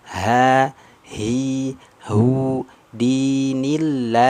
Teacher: Ha yang keluarnya dari tenggorokan bawah aqsal halqi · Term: huruf ha besar